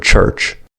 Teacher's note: The voiceless affricate cha is pronounced twice in the word church.